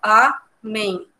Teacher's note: entre amém, o men é a sílaba mais forte